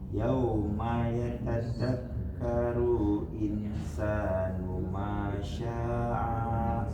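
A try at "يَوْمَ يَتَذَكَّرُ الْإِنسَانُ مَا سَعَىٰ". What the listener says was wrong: Yauma yatadzakkarul insanu ma sa bukan sya sa'a.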